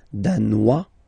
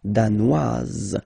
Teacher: Z, okay, insist on that. Danois, don't pronounce the final S. Danoise, here you pronounce it.